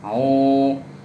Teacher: Di situ ada waw mati. Waw mati sebelumnya dhammah, berarti dia panjang 2 harokat, atau disebut mad tabi'i. Panjang 2 harokat, au, cukup segitu.